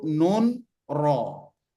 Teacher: ujung lidah menyentuh gigi seri bagian atas yang dagingnya yang dagingnya ya bukan gigi giginya tapi dagingnya Jadi kalau ini